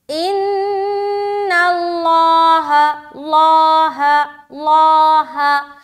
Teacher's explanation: ہا بالکل موٹا نہیں ہوگا، صرف اور صرف لام کو موٹا کرنا ہے